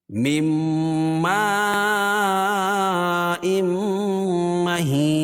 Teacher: نون ساکن کے بعد میم آئے تو ادغام مع الغنہ ہوگا، اور یہاں مد متصل ہے.